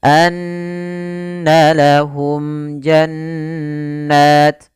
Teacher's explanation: suara mimnya harus dibaca dengan jelas dan tidak boleh ditahan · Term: izhar syafawi